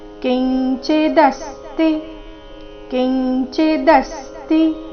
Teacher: ಕಿಂಚಿದಸ್ತಿ ದ ಮೇಲೆ ಆಘಾತ ಸ್ತಿ ರಸ್ವ ಇದೆ